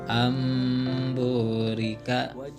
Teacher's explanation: jadi berubah menjadi mim ya nun sukunnya itu, tapi disertai dengan gunah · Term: iklab